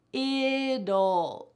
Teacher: That T changes to a D sound.